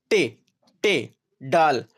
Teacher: इसमें जबान की नोक ऊपर होकर पीछे की तरफ मुड़ती है और फिर तालों की तरफ छूती है या तालों को छूती है पीछे पर पहले मुड़ती है फिर